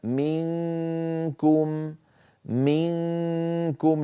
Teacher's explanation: لاحظوا بأنني أنتقل من مخرج الميم في كلمة منكم إلى مخرج الكاف مباشرة، وعليها تماما، على الكاف تماما، لأن الكاف مخرجها بعيد، مخرجها من أقصى اللسان، فلا لا أهيئ الفم عند المخرج، بل آتي إليه مباشرة.